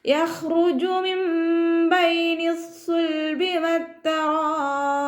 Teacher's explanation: അവസാനത്തിൽ ബ കൽക്കലയുടെ ലെറ്റർ ആയതുകൊണ്ട് ഫുൾ സുക്കൂന് കൊടുത്തിട്ട് നിർത്തി കൊടുക്കുക